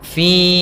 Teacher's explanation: Di sini ada kasrah bertemu dengan huruf ya sukun. Maka kita namakan dengan mad tabi'i. Panjangnya adalah 2 harakat.